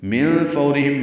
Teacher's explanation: من فورہم میں نون ساکن کے بعد فا آنے کی وجہ سے اخفا ہے، فو اور لین ہے، را باریک ہے، ہم میں اظہار شفوی ہے، تو ادغام شفوی بھی ہو گیا، اظہار شفوی بھی ہو گیا، کیونکہ آگے ہا رہا ہے۔